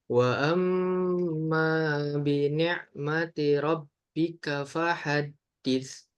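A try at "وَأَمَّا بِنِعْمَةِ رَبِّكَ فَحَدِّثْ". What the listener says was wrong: Oke, ini lebih lambat maka lebih panjangkan juga ya tempo harokat dalam gunnahnya itu. Wa amma bi ni'mati. Dan ya untuk apa gunnah ini metode yang saya pikir oke juga untuk mengukur lamanya gunnah ini adalah dengan diayunkan. Oke, diayunkan. Seperti halnya kita dalam membaca mat tabi'i juga yang 2 harokat.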